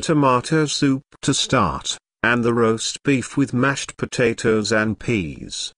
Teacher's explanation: tomato soup roast beef and mashed potatoes are compound words the stress falls on the second word in each phrase